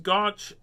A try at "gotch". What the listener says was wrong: Now, okay, you pronounced it with an N, gaunch. But you see, I grew up in Saskatchewan as well, and we called it gotch or gitch.